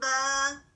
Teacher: آواز اوپر کو جا رہی ہے, ریز ہو رہی ہے